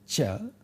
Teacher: cha is called a palatal sound